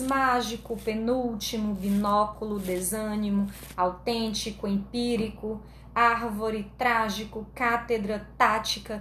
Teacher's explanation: são aquelas palavrinhas cuja sílaba tônica é a antepenúltima o a terceira de trás para frente tá bom nesse caso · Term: proparoxítonas